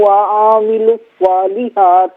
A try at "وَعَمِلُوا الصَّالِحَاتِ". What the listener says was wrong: ان کو کھینچنا نہیں، وعملوا الصالحات